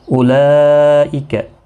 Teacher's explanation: یہاں پر مد متصل ہے، 4 الف کی مقدار کے برابر کھینچ کر پڑھیں گے۔ ذی یا مدہ ہے، 1 الف کی مقدار کے برابر کھینچ کر پڑھیں گے۔